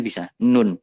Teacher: ujung lidah itu menyentuh langit-langit atas di atasnya gigi